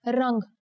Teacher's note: Let's check out the word for color, rang. Here the Anuswar makes it sound like the ng in the English word song.